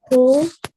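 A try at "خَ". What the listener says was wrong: Kho. Pesh not. Kho zabar.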